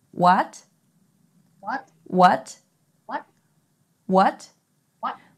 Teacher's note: the second tone is pronounced similar to the rising tone in english when asking a question